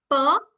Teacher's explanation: i close and then suddenly the air comes out right there can you see so you stop before you start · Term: plosive